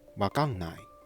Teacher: that quick tap for ''ら'' just gets dropped in fast speech.